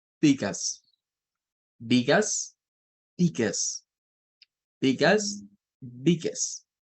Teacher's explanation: el schwa suena como que fuera una E, pero no es una E, es el schwa